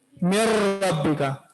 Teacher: تو اب یہاں پہ دیکھیں مر رب کا, نون کو ہم نے را میں داخل کیا اور غنہ نہیں کیا. سمجھو یہ نون یہاں پر سائلنٹ ہے, اس کا ادغام ہم نے کیا را میں غنہ کے بغیر. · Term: ادغام تام